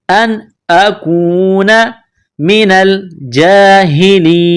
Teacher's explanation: نون ساکن کے بعد حمزہ ہے، حروف حلقی ہے تو نون ساکن پر غنہ نہیں کریں گے · نون کو لام کے ساتھ ملانا ہے